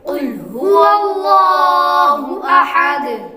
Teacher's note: قاف پر پڑھیں گے، حروف مستعلیہ میں سے ہے، باریک کاف نہیں پڑھیں گے، کل نہیں بلکہ قل پڑھیں گے۔